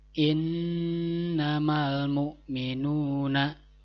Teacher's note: cara membacanya adalah dengan dibaca dengung dan Q panjang dua harakat dibacanya panjangnya dua harokat tidak ditahannya dua harokat tidak boleh lebih daripada dua harokat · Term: ghunnah